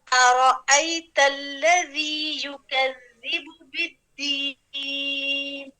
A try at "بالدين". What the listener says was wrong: بالدين زیادہ لمبائی میں نہیں لے کر جائیں ہم اگر یعنی مد میں ہم کر سکتے ہیں کبھی لیکن آپ اتنی زیادہ میں نہیں جائیں کیونکہ آپ زیادہ میں زیادہ کر رہی ہیں ہم نے اتنا زیادہ نہیں کرنا بالدين